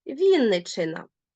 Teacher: дві букви ч позначають лише один довгий звук · в нас дві букви н і дві букви ч так от два звуки довгі